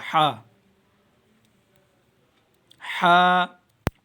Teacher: جیم، ہا، ہا، حلق کے تین حصے ہوتے ہیں، ایک وہ جو منہ کی طرف ہوتا ہے گلے کی طرف، ایک سینٹر کا حصہ ہوتا ہے اور ایک سینے کی طرف حصہ ہوتا ہے۔ ہا، حلق کے جو درمیانی حصہ ہے وہاں سے ہا ادا ہوگا